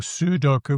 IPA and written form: sudoku (Sudoku)